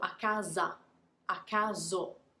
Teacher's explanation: don't really stick to it until the end of the word for italians is super super important to pronounce those vowels at the end of words um you have to push until the word is over